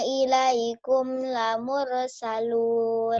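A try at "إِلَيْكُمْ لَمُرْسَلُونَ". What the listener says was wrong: Jangan ilaikum lamure, jangan ada e-nya ya. Itu kol-kolahannya di huruf 5 aja. Selain itu nggak jangan ada e-nya.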